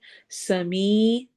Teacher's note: इन्नक समीउद दुआ, सीटी की आवाज होगी सीन में। समी, या मद्दा हो रही है, दो हरका लंबा करेंगे, लाइक खड़ी जेर की तरह।